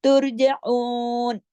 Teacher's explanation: ऐन को हलक हरफे हल्की है, गले से पड़ी, अलिफ की तरह नहीं